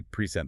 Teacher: Stress on the second syllable.